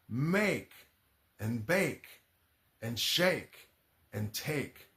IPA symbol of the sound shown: eɪ